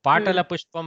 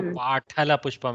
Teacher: पाटल पुष्पम अत्र अल्पप्राणटकार एव, न तु पाठल पुष्पम इति.